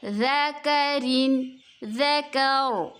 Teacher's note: وقف کی صورت میں را کو ہم پر پڑھیں گے